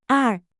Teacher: Fourth tone falling starts high and sharply drops to low.